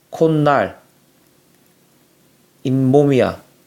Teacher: 사이시옷을 받쳐 적었을 때는 음절의 끝소리 규칙과 비음화를 겪어서 니은, 니은 소리가 난다는 것을 확인할 수 있지